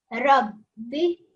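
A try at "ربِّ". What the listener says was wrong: Don't roll the ra, okay? Rabbi. just work on the ra, okay? That's not the correct way to do it, okay?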